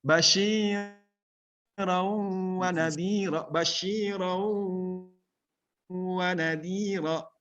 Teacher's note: huruf tanwin bertemu dengan waw, langsung ke al-khayshum, ke ini, ke hidung.